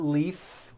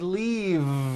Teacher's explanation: leaf with an unvoiced f i should have said leave with a voiced v sound